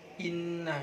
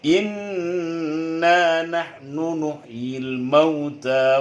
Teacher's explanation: idgham gunnah nun dan mim yang bertasydid, itu ada idgham gunnah 2 harkat juga